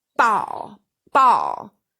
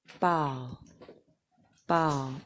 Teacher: listen how hard my lips come together with that pressure